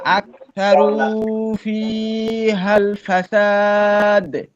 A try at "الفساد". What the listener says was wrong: এখানে সিনের একটু সার মতো শোনা গেছে। সিন আর একটু বাতাস বের হবে, সিটিও আছে।